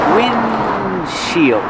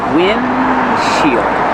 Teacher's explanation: You make the position of the D, but don't release D. · you don't really hear the D because it's a stop D. Windshield.